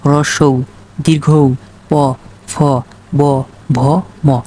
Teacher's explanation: অর্থাৎ আমরা যখন 2 ঠোঁটের মাধ্যমে উচ্চারণ করে থাকি তখন সেগুলো হয় ওষ্ঠবর্ণ